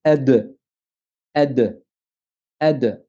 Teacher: Et pour être plus explicite, pour que tu saches vraiment en quoi ça consiste, le point d'articulation, on va prendre la lettre del, c'est qu'il est défini par le bout de la langue au contact des racines des incisives supérieures. Par exemple, on va dire ad, ad, ad. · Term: qalqala